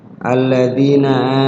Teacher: Di situ mad tabi'i ya, sekedar berdurasi dua ketukan, sekedar diayun.